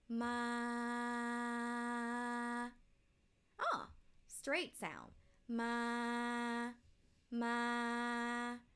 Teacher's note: let's pronounce this word all the way straight along the mid pitch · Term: midtone or flat tone